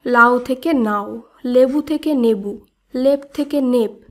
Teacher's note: রাঢ়ী উপভাষায় সাধারণ লোকের উচ্চারণের ক্ষেত্রে ল এবং দন্ত ন এর মধ্যে বর্ণ বিপর্যয় ঘটেছে। অর্থাৎ রাঢ়ী উপভাষায় দেখা যায় কোনো শব্দের ল কখনো দন্তন্য রূপে আবার কখনো দন্তন্য ল রূপে উচ্চারিত হয়।